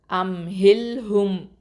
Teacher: அடுத்தது ஹம்சா ஃபத்ஹா மீம் சுக்கூன் அம், ஹ கெஸ்ரா லாம் சுக்கூன் ஹில், அம் ஹில், ஹ தொம்மா மீம் சுக்கூன் ஹும், அம் ஹில் ஹும். இந்த ஹங்கிறது வந்து எங்கேருந்து வருது, அக்கசல் ஹல்குலேருந்து, கீழ் தொண்டையிலேருந்து வரணும்